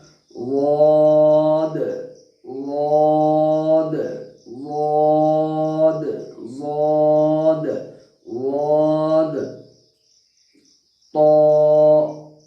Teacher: ज़ाद पुर हर्फ है, बिल्कुल मुंह भर के पढ़ना है